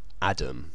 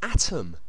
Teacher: words like atom, A-T-O-M, should be pronounced Adam, you know, as if they were spelt with a D